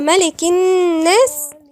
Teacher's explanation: النون والميم حرف غنة مشدد مقدار حركتين